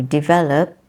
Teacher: develop the stress is in the second syllable